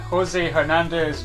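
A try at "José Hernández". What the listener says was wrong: Pronounce it correctly. The H is silent.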